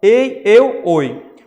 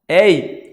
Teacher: Quando eu pronuncio ei, eu pronuncio com um som mais fechado